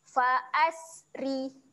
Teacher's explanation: Ri kita akan bacakan dengan ro yang nipis. Senyum saja eh.